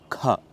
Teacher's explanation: a mahaprana variant of Ka which is uttered with a lot of expulsion of air